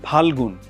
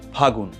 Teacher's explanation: এখানে ল কিন্তু লোপ পেয়ে গেল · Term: অন্তর্হতি